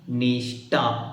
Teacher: पहली बार में हमने ठा बोला, ठा ना बोल के उसको टा बोलना है ना, निष्ठा। पीछे विसर्ग है इसलिए थोड़ा सा खींचना, निष्ठा।